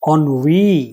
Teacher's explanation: ओ न और फिर वी, ये स्ट्रेस है तो वी पर स्ट्रेस